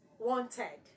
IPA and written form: ˈwɒntɪd (Wanted)